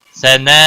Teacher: وتعالی جدک وجل ثناؤک، وجل، تشدید والے حرف کو تھوڑا سختی کے ساتھ پڑھیں گے تاکہ تشدید ظاہر ہو۔ ثناء، مد متصل ہے، بڑی مد ہے، 5 الف کے برابر کھینچ کر پڑھیں گے